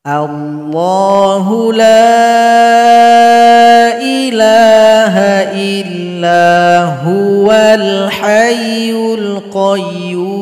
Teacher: kalau kita lanjut huwa dengan al-hayyu, maka hamzah wasal hilangkan harokatnya.